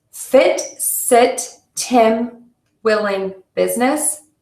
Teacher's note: the if is very short with relaxed lips that are not as wide